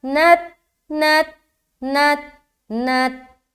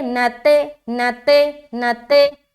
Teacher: اسی بات کا خیال رکھنا ہے کہ لوٹتی ہوئی آواز معلوم نہ ہو، کیونکہ تا حروف قلقلہ میں سے نہیں ہے